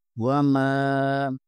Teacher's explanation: میم زبر کے آگے الف مدہ ہے، اسے ایک الف کے برابر کھینچیں گے